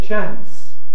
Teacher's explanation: in the north of England, most people use a short vowel, the same vowel as cat, and say chance.